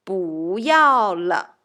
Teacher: So 要 is the fourth tone. If we want to add 不 in front of 要 we should change the pronunciation of 不